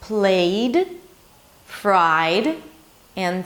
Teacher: when the past suffix appears after a vowel then it's pronounced as a 'd'